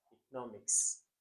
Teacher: the stress pattern on economics is always in the middle